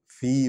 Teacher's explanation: فا جو ہے حرف شفوی ہے، اس کو ہونٹوں سے ادا کریں گے.